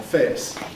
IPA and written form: fɛːs (face)